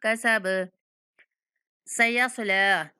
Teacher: लाम के ऊपर खड़ा ज़बर है तो इसलिए हमने इसको 1 सेकंड तक लंबा करना है।